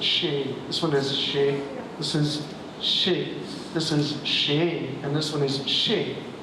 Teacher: 5 different pitches which distinguish the meanings of these words